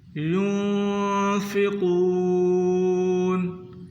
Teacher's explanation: یہاں نون ساکن ہے، غنہ کریں اور قاف کو پر کر کے یعنی موٹا کر کے پڑھیں، اور قاف کو کھینچنا بھی ہے۔